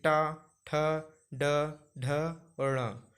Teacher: तो इनको बोलते समय जीभ है जो वो थोड़ी सी आगे लगेगी। ऊपरी छत में जो अपने मुंह का ऊपरी हिस्सा होता है उसमें आपकी जीभ आगे लगेगी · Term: मूर्धन्य वर्ग